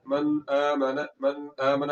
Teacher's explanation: تو یہاں پر ہم نے غنہ جو کرنا ہے وہ آواز کو ناک میں لے جا کر قصدن لمبا نہیں کرنا. یہاں پر غنہ تو ہوگا مگر یہ غنے کی مقدار بہت ہی کم ہوگی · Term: اظہار